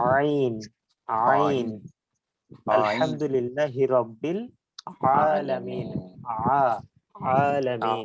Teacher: এরপরে যেই তিনটি বর্ণ নিয়ে একটু কনফিউজ সৃষ্টি হতে পারে, সেটা হচ্ছে হামজা এবং আইন। আইনটা উচ্চারিত হবে কণ্ঠনালীর মাঝখান থেকে, যেখান থেকে আমরা হা উচ্চারণ করছি সেখান থেকেই আইন উচ্চারণ হবে।